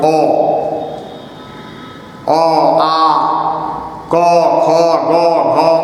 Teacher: जैसे दिन में अ है, अ का उच्चारण स्थान क्या है कंठ